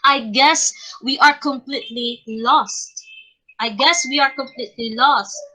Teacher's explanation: it describes how the voice falls on the final stress syllable of a phrase or a group of words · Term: falling intonation